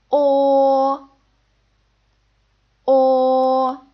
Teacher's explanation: right so similarly that is how we pronounce this final o it's a bit like the interjection o but less rounded you need to point your lips a little bit more purse your lips together